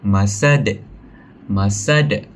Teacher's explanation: So kita patut pantulkan huruf dal itu dengan jelas saat berhenti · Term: qalqalah kubra